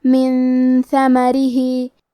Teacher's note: کلمت من کے آخری میں نون ساکن ہے، پھر حرف الثاء ہے کلمت ثمرہ، ثاء حروف الاخفاء میں سے ہے تو ہم یہ حکم کو غنہ کے ساتھ ادا کریں گے۔ من ثمرہ، کلمت ثمرہ میں ثا کی ادائیگی زبان کے سر اور اوپر والے دانتوں کے اندرونی کناروں سے ہے